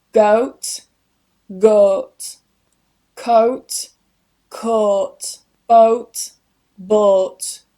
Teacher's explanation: Another diphthong is əʊ this gets changed to oː